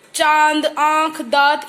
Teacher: next है हमारा चंद्र बिंदु बच्चों, जैसे कि चांद, आंख, दांत, इन सब पे लिख रहा है ना ये आपको चंद्र बिंदु, ये भी ना तो स्वर है ना व्यंजन है, और इसके उच्चारण में हमारे मुंह और नाक दोनों से आवाज बाहर निकलती है